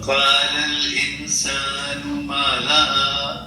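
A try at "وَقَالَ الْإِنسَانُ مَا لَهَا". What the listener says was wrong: سین پڑھیں گے نا انسان ٹھیک ہے. اس کو موٹا نہیں کریں گے.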